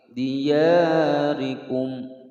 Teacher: Min dia panjang 2 ketukan. Ri, ro berharokat kasroh, dibaca tipis tarkik.